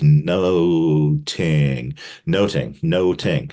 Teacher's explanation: Elizabethan pronunciation would have had a harder TH sound so that nothing would have sounded like noting